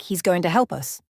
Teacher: In connected speech, the word is often becomes es, and to becomes ta, so the sentence sounds like he's going to help us. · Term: Weak forms